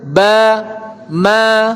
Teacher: Adapun ba sama ma tertutup kedua bibir, bertemu dua bibir. Ba, ma. Nah, tertutup.